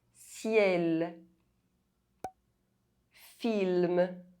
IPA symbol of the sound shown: l